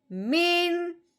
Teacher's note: نون ساکن پہ کوئی غنہ نہیں کرنا، کوئی اخفا نہیں کرنا، بغیر غننے کے اظہار کے ساتھ پڑھنا ہے